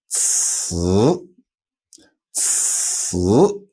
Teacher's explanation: ZI is z, but CI has no voice. There's like an explosion of air, like almost like a tire being popped. And then the voice comes in afterwards.